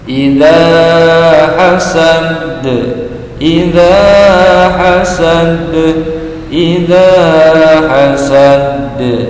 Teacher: dal yang disukun menjadi bacaannya memantul atau qalqalah. Dikarenakan qalqalah ini ada di akhir, maka disebut dengan qalqalah kubra.